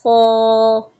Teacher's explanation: حلق کے اوپر کی جانب سے جو منہ کی جانب حصہ ہے وہاں سے ادا کریں گے